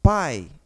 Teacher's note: vou partir do som forte que a letra A para o som fraco ou seja o a é vogal porque sempre vai ser e o i é semivogal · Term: ditongo decrescente